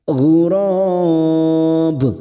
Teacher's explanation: Ghurab, dan ujungnya pada saat dibaca wakaf terdapat huruf ba, maka kita pantulkan